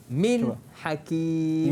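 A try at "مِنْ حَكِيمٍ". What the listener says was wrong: Cuma berhenti jangan lama sangat takut jadi saktah. Saktah betul man lama. Min hakim. Terus masuk. tapi sebutan tu mesti kita matikan betul-betul dulu. Begitulah kita menyebut huruf izhar.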